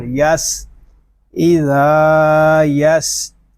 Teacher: سین حروف صفیریہ میں سے ہے، اس میں سیٹی کی آواز آئے گی.